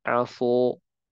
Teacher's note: Contohnya kata asa. Kalau kita tebalkan sinnya, maka menjadi aso